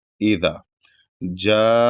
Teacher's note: यहां पर मद है और यह मद्दे मुत्तसिल है क्योंकि यहां पर मद और उसके बाद हमजा एक ही कलमा में है जो कि मद्दे मुत्तसिल की पहचान है।